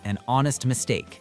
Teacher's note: Honest starts with a silent H, so it begins with a vowel sound